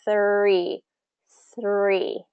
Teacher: it has that voiceless th sound and the R